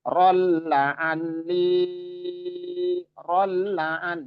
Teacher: idgham bila ghunna idgham artinya memasukkan bila ghunah artinya tanpa dengung tanpa ghunah